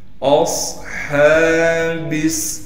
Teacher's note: اصحابس، حمزہ کو صاد سے ملائیں گے، صاد کو موٹا کر کے پڑھنے کے ساتھ صاد میں سیٹی ادا کرنی ہے، ہا پر کڑا زبر ہونے کی وجہ سے ہا کو ایک الف کی مقدار کھینچیں گے.